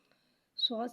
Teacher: صاد حرف مستعلیہ ہے، اس کو موٹا پڑھیں گے۔ صاد کو ایک الف یعنی 3 مقدار کھینچ کے پڑھیں گے۔